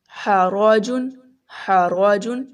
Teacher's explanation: را جو ہم نے موٹا پڑھا ہے کیونکہ را کے اوپر زبر ہے